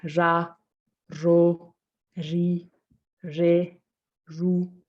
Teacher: as a french r yeah like it's almost like there's almost it's quite soft i would say it's almost like there's also like a ja kind of sound to it like the j it's not very um not very rough again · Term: the r sound